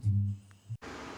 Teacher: Even though she's screaming, pitch is down at the end of the sentence. Usually when we have a statement, we tend to go down in pitch. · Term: intonation